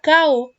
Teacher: Por ejemplo, que la persona quiera decir carro y en lugar de decir carro diga cao. Está omitiendo como tal el sonido de la R. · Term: omisión